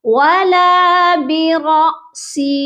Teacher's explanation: اور حمزہ ساکن کو جھٹکا دے کر پڑھتے ہیں